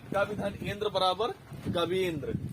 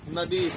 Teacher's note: ई और ई मिलाकर दीर्घ बड़ी ई हो जाएगी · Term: दीर्घ स्वर संधि